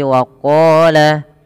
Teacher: pangkal lidah kita kita angkat dia menebal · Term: huruf yang tebal